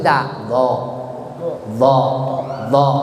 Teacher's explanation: Kalau do mah mahrajnya di ujung lidah digigit seperti da, do gitu.